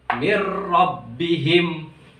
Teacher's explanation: Idgham artinya memasukkan bi dengan la tidak gunnah dengung. Memasukkan dengan tidak dengung. Berarti jangan ada dengungnya. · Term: idgham bila gunnah